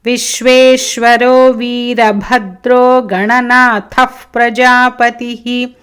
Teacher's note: రెండు మహాప్రాణాలు భద్రాలో గణనాథః